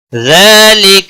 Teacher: زال کے اوپر کھڑی زبر ہے ایک الف کے برابر کھینچ کر پڑھیں گے